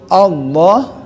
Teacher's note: Qul huwallah, lo-nya harus panjang ya, gitu. Mad tabi'i ya, panjang 2 harokat saja.